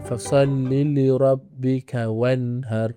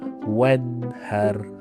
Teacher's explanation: Ha sepatutnya salah. Nun mati bertemu dengan ha. Kita tak boleh baca dengung. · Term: izhar halk